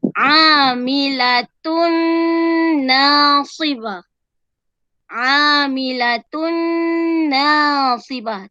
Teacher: Tanwin bertemu dengan nun. Masukkan dan dengung.